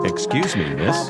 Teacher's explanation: Your voice should rise twice when pronouncing the word miss.